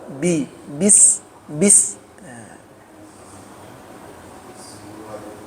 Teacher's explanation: Huruf ba itu tidak ada hembusan napas keluar